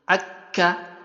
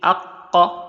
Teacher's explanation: The makhraj of kaf is just a little below the makhraj of qaf. So they are very close.